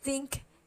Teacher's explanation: think is voiceless it doesn't have any vibration